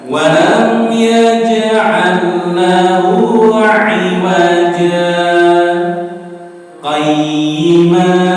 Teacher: Seolah-olah lam sukun menika tidak ada langsung lam tasydid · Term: idgham mutamathilain